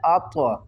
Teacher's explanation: طوا کے اوپر قلقلہ بھی کرنا ہے